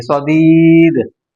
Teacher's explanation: یا ساکن ہے اور اس سے پہلے زیر ہے، تو یہاں پر اس کو کھینچ کر پڑھیں گے